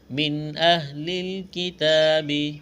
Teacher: نون ساکن کے بعد حمزہ ہے، حروف حلقی ہے، اظہار کریں گے، غنہ نہیں کریں گے